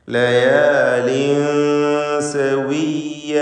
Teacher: തൻവീനിനെ സീനിന് മുമ്പിൽ വന്നതിനാൽ ഇഖ്ഫാ ഹഖീഖി നൽകി മറച്ചു മണിക്കണം. ലയാലിൻ അവ്യക്തമാക്കി മണിക്കുക.